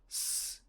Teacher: Th is a voiced dental fricative. S is a voiceless alveolar fricative.